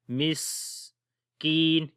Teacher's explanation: سین کے اندر صفت صفیر یعنی سیٹی کی آواز، اور ہمس بھی آئے گا ، ہمس بھی ہوگا یعنی کہ سانس جاری ہوگا، مسکین، کی